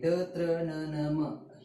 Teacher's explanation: अनुनासिकांचा उच्चार करताना जिभेचा इतर भागांना तर स्पर्श होतोच तोंडातील, परंतु त्यांचा उच्चार हा नाकातून देखील होतो, म्हणून त्यांना अनुनासिके असे म्हणतात.